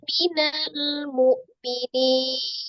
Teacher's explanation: Awalnya mat tabi'i dibaca 2 harakat, tapi mat tabi'i ini kemudian bertemu dengan satu huruf yang disukunkan karena waqaf. Mad yang bertemu dengan satu huruf yang disukunkan karena waqaf namanya mad arid li sukun.